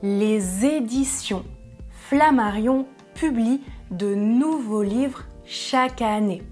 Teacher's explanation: je prononce édition avec la liaison